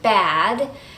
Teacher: at is what's called a front low vowel that means that it's made with the tongue in the front of the mouth and with the jaw low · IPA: /æ/